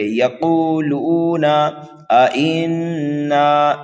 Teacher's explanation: نون مشدد ہے، غنہ کر کے پڑھیں گے